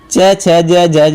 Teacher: च, छ, ज, ज होते हैं स्पर्श संघर्षी कहलाते हैं